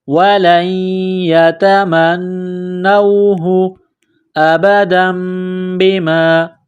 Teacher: نون کو واو کے ساتھ ملانا ہے، وَلَن يَتَمَنَّوْهُ أَبَدًا بِمَا، تنوین کے بعد با ہے، یہاں پر غنہ کریں گے، آواز ناک میں چھپائیں گے، اس ناک میں آواز چھپانے کو اقلاب کہتے ہیں